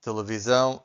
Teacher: S between two vowels, the S sounds like Z